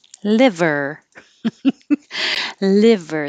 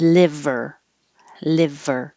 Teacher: if your tongue is too high, it will sound like lever, E, and this is I, a little bit lower.